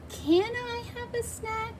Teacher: my voice goes up i'm wondering